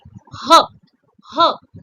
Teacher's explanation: the letter ha is called a glottal or aspirant consonant because it is produced with a strong breath coming from throat.